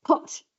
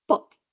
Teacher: the word pot in many varieties of English will have aspirations, like a puff of air at the beginning